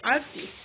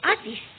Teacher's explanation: the American version include the R artist artist while British English say artist with no R and a longer vowel. · The American version include the R, artist, while British English say artist with no R and a longer vowel. This example highlight the key difference, vowel quality and length, diphthong pronunciation, and rhoticity or whether the R sound is pronounced.